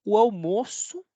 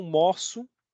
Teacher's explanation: hermoso aquí sería cerrado mozo aquí es abierto